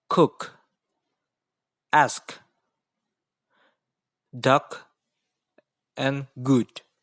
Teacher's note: the flow of air out of the body is interrupted by touching the back of this tongue to the villain the soft part of the roof of the